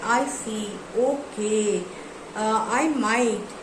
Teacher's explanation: We use words such as right, I see, okay, sure, I might, with a falling tone